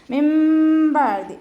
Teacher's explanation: നൂൻ സാക്കിനയെ മീം ആക്കി മാറ്റി മറിച്ചിട്ട് ഉച്ചരിക്കുക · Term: അപ് ലാബ്